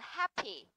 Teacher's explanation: từ happy thì trọng âm sẽ rơi vào âm hap chứ không rơi vào âm thi nhá